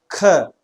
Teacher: ख थोड़ा लंबा खींचना पड़ता है, ख, तो प्राणवायु मुंह से अपने आप ज्यादा बाहर निकल रही है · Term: महाप्राण